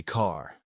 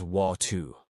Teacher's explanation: in classic New York speech, the R disappears unless it's at the beginning of a word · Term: the dropped R